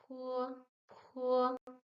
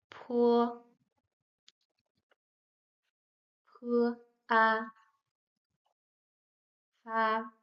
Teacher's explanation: like the English P, but we make air flow through our lips